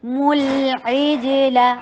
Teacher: تو تاکہ پر ضمہ ہونٹوں کو گول. ملعجل عین حلق سے ادا کیجیے اور کسرہ کے لیے ای کی ساؤنڈ. جیم کے اوپر قلقلہ.